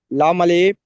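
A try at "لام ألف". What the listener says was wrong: লাম আলিফ নয়, আমি কি বললাম, যে অক্ষরগুলো একটু টান আছে সেগুলো টান দিতে হবে।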